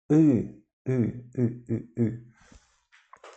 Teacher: É um I mais profundo, I, quando a língua não se encosta nos dentes inferiores. Encolhemos um pouco.